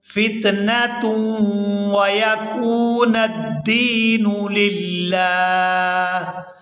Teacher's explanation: تا کو واو مشدد کے ساتھ ملائیں گے تو غنہ کریں گے